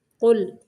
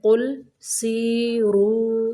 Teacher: قاف کو موٹا پڑھنا ہے، لام کو قلقلہ نہیں کرنا۔